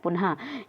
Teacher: विसर्ग, तो इस ध्वनि का उच्चारण हा के समान होता है।